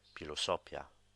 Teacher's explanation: it just sounds like a normal P with a slight breath at the end of it to denote the H